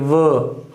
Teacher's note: इस व को बोलने के लिए आपके अपर टीथ जो है लोअर लिप्स के साथ टच करेंगे, व, और वो डब्ल्यू भी व का साउंड देता है, उसमें वो सिर्फ आप लिप से उसका प्रोनाउंसिएशन करोगे, ठीक है।